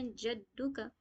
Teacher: جب جیم کو دال میں ملائیں گے جد، تو اس وقت ہم کیا کریں گے؟ قلقلہ کریں گے